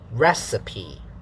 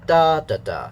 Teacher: so the first part is stressed yeah and then this is syllable one stressed syllable two unstressed because there's a full stop syllable 3 is also unstressed so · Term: stress pattern